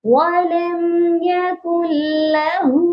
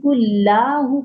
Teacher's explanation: اور یہاں پر جو غلطی ہوتی ہے وہ یہ ہوتی ہے کہ قل لاہ پڑھ رہے ہوتے ہیں، اس لام کو کھینچنا نہیں ہے کیونکہ اس کے اوپر حرکت ہے